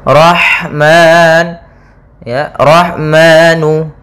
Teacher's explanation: Kemudian ra tebal, tafhim, rahmani pada lafal ha yang sukun, yaitu mengalirnya nafas kita karena ada sifat hamznya